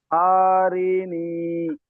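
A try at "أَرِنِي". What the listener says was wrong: টান দিচ্ছেন কেন আপনি? টান নেই ওখানে, হারাকাত, হারাকাতের পড়াকে তাড়াতাড়ি পড়তে হয়, তো টান হয়ে যাচ্ছে আপনার। সকলে শুনুন, আরিনি।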